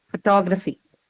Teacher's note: the same word has changed its stress from the first syllable to the second one